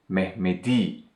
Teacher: an important point about proper names the consonant mutation rule where the last unvoiced consonant changed to their voice counterparts when a suffix that begins in a vowel is attached to the word